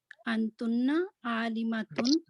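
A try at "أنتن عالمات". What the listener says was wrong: Don't make it long, please.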